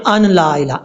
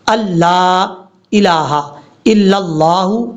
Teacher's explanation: حمزہ کو لام سے ملانا ہے، بیچ میں نون کو چھوڑ دیں گے